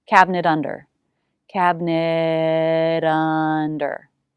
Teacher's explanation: It will be a flap T, ra, if it links to a word that begins with a vowel or diphthong